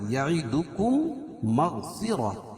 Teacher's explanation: میم ساکن کے بعد میم آئے تو ادغام شفوی ہوتا ہے، یعنی میم کا میم میں ادغام ہوگا۔ میم کا میم میں ادغام ہوگا، پہلے حرف کو مدغم کہیں گے اور دوسرے حرف کو مدغم فی۔